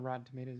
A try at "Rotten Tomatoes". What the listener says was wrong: I noticed you pronounced the T.